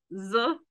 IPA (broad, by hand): z